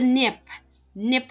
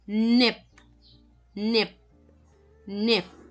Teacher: unreleased or sound cut off